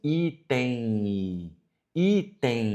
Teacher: Na pronúncia, quando nós falamos assim, item, item, veja que o M ele se transforma num I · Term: ditongo nasal